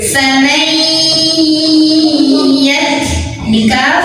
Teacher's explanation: Artinya nun sukun tidak terbaca jelaskan, bukan faman, tapi kita langsung fokus ke ya, masuk. Famai sambil tahan dulu dengungannya sampai berasa ke hidung. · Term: idgham bi gunnah